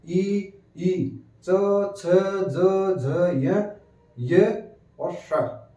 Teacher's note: जीभ ऊपर टच करे तालु, इसलिए तालु, इसको हम कहते हैं तालुव्य वर्ण